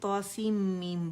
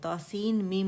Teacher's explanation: آپ نے دیکھا میں نے توسیم میم بولا، توسین میم نہیں بولا میں نے. نون نہیں ادا ہوگا کیونکہ نون آلریڈی میم کے اندر جا چکا ہے، جس کی وجہ سے یہ مثقل ہو گیا ہے. ٹھیک ہے، اور اس کا غنہ ادا کریں گے. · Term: ادغام تام بالغنہ